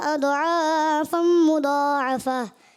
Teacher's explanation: ایک تو ضاد کو پر نہیں کیا اور ضاد میں کلکلا بھی ہو گیا, اور اس نے مد منفصل وغیرہ تھوڑی کم کی.